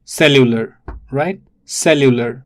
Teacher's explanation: It is cellular, so it's cellular, and the stress falls on the first syllable.